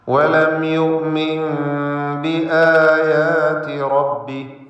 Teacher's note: വലം യുഅ്മിൻ ബിആയാതി റബ്ബി യുഅ്മിൻ എന്നതിലെ സാക്കിനത്തായ നൂനിനെ ഇഖ്ലാബ് ചെയ്ത് മീമാക്കി മാറ്റി മണിക്കണം.